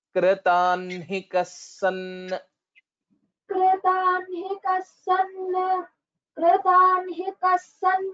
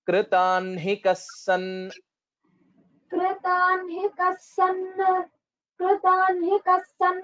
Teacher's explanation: write hakara first and then nakara based on the practice and the right way to pronounce this particular word is kritanhikas so first we will have to tell na and then ha